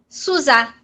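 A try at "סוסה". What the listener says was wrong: Sussá, é sempre som de S.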